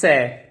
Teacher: जो तीसरा श है, ये दंते स है, दांतों से बोला जाता है